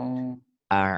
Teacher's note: A'u Au, ke bawah, bukan ke hidung ya. Suara A'u ain itu ke tenggorokan.